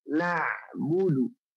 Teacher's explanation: huruf ain tidak dari hidung, tapi dari tengah tenggorokan. Huruf ain suaranya mengalir sedikit.